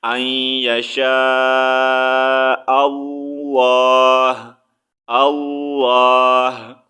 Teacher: تو یہاں پر ہا کا ہلکا سا ساؤنڈ نکالیں گے، ہا کو ساکن کر دیں گے